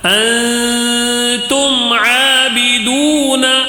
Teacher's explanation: میم ساکن کا اظہار ہوگا، یعنی جلدی پڑھنا ہے یہاں میم میں، ٹھیک ہے، میم کو غنہ نہیں کرنا ہے · اب یہاں پہ بھی ایک قاعدہ ہے، میم ساکن کے بعد عین آیا ہے، میم ساکن کے بعد عین آیا ہے تو میم ساکن کا اظہار ہوگا